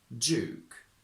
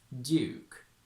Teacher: Similarly, when we have d, y in the same word, it's very common to go j in modern RP and to keep them separate in traditional RP